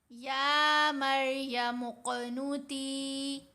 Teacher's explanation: یا کے اوپر کھڑا زبر ہے اس لیے ہم نے یا کو لمبا کرنا ہے، باقی کسی آواز کو یہاں لمبا نہیں کیا جائے گا.